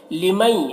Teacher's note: مئی میں ادغام ناقص ہو رہا ہے، غنہ کے ساتھ میں پڑھیں گے اسے